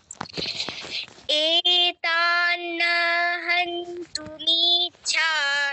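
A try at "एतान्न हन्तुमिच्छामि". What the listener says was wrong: এত বলে টানা যাবে না এত বলে সাথে সাথে হান্তুতে চলে যেতে হবে হান্তুমিছামি ছাতে গিয়ে শুধু দীর্ঘ হবে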